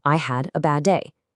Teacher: Not two D sounds, just one long one.